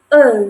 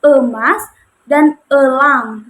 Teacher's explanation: Nah, kalau E ini itu lidahnya itu berada di madya atau di tengah gitu. Kemudian menggunakan lidah bagian tengah.